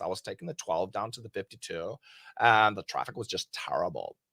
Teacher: There's a lot of vocal fry, but they actually really did talk like this.